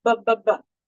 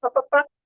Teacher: Ba is voiced, pa is voiceless.